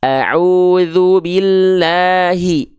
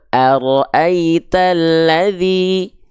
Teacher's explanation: kalau dari segi makhrajnya dia dilafalkan dari yang namanya aqsal halqi atau pangkal tenggorokan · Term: hamzah